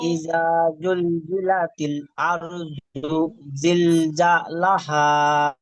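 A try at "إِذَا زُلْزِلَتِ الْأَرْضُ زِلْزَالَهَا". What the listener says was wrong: হ্যাঁ, মাশাআল্লাহ, এবার ঠিক আছে।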